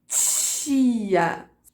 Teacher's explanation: você tem uma obstrução total, como numa oclusiva, t, mas logo em seguida você já tem uma liberação para que o ar passe friccionando. Então, por isso que a gente tem essa percepção de que nas africadas você segura o ar um pouquinho, mas logo em seguida ele passa com aquela fricção que pode se alongar por mais tempo.